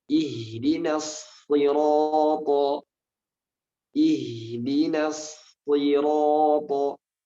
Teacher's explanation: Walaupun dia kasrah, tetap sifat tebal pada shad harus selalu ada.